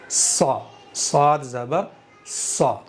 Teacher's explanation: स्वाद ज़बर सा, नहीं, मोटा करो, इतबाक करना है ना इसके अंदर, और मुस्तालिया में से मोटा करेंगे। ज़बान की जड़ को ऊपर के तालु की तरफ उठाते हुए मुंह के अंदर हवा भरते हुए पढ़ेंगे।